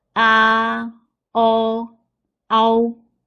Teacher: There are 2 simple finals in this syllable, a and o. Spell them together. Slide from a to o.